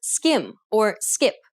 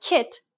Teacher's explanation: the K in skim doesn't have a burst of air at the end of the sound